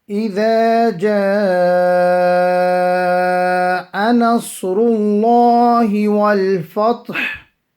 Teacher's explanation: Ra, because of the Dhamma, will be read full. And also the name of Allah having the Dhamma, the pesh before it, will be read full.